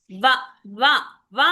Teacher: కంటోస్ట్యః తర్వాత వ ఉంది ఇంకో అక్షరం వ ఉంది ఈ వ అనే అక్షరం ఎక్కడి నుంచి పలుకుతుంది వ వ అంటున్నాం వ అనంగానే దంతాలకు తగులుతుంది పెదాలికి తగులుతుంది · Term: దంత్యోస్త్యః